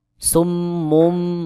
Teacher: নুন সাকিন বা তানউইনের পরে বা আসলে নুন সাকিন বা তানউইনকে বাদ দিয়ে ছোট্ট মিম দিয়ে বদল করে পড়তে হয়। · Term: ইকলাবের হরফ